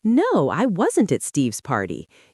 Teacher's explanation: Use the stress on at to show your point